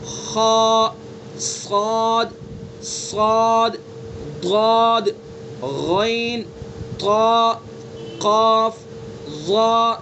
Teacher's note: یہ 7 حروف ہیں جو ہمیشہ ہر حال میں پر پڑھے جائیں گے, یعنی موٹے کر کے پڑھے جائیں گے, منہ بھر کے پڑھے جائیں گے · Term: حروف مستعلیہ